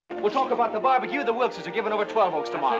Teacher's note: given이 되는 거예요. 쉽게 말해서 giving이 네, G 발음 빠지고 I 발음 빠지면서 given 이렇게 최종 소리가 이렇게 난다는 겁니다.